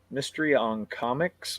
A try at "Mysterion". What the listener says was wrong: It's one word. Mysterion.